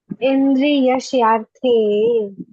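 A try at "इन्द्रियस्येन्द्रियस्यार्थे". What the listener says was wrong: Indriyas Indriya. There are two Indriyas are there. Indriya, Yena, Indriya. Indriya, Yena, Indriya. So Indriyas Indriyasyarthe.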